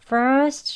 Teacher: 여기서는 하고 멈추는 스톱 t 발음으로 합니다 어떻게 되냐면요 first 하고 혀 위치만이 t 위치에 딱 붙여서 끝나는 거예요